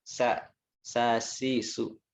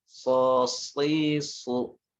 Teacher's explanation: untuk huruf sod ini makhrajnya sama dengan huruf sin. Sa. Hanya beda di sifat. Kalau sin tipis, sa, si, su. · Hanya beda di sifat. Kalau sin tipis, sa, si, su. Kalau huruf sod tebal, so, si, su.